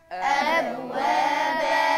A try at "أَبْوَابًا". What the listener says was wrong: الباء عندي هقلقل الحرف من حروف القلقلة اللي مجموعة في قطب جد. الحرف ساكن وقدامي أهو في وسط الكلمة. لازم نبرة تحريك الحرف تبقى قوي عشان يظهر الحرف معايا، ما تبقاش أب وابا. أب وابا. بهزه تاني، قولوها. أب وابا.